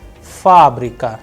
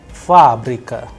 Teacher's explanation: The stress is on first a that is why it is under stress. The sound of first a is higher than the rest.